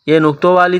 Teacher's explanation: یہ نقطوں والی تا ہے، گول تا باریک پڑھیں گے